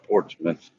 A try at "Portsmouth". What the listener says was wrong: Portsmouth. No, it's written as Portsmouth. Ain't no Smith in it. The way you Ohioans talk.